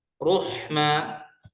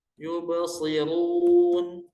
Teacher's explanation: cara mempraktekkan sifat tafkhim dengan menaikkan lidah belakang atau disebut dengan pangkal lidah